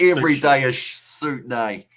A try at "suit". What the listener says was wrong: It sounds like you're saying soup.